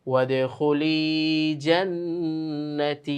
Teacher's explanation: শেষে মাদের হরফ থাকার কারণে আমরা টেনে টেনে থামলাম